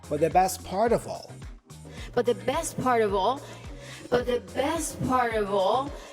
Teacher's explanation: Also remember that the O for of sounds like a schwa sound, of. Also the F there has a V sound, which then is joined with the word all